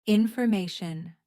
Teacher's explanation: Stress is on the third syllable.